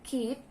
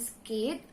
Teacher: there is a slight aspirance or H sound following the K. In the second, it is absent.